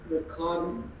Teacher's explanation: En ningún ing la G se pronuncia.